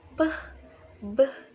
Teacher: The first part is bilabial. Bilabial sounds are produced with both lips